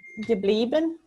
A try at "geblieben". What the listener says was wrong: Yeah, geblieben